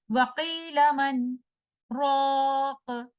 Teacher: कुछ देर के लिए पॉज देंगे और नया सांस लिए बगैर अगले लफ्ज की अदायगी करेंगे · सख्त नून साकिना और रॉ को मिलने से रोकता है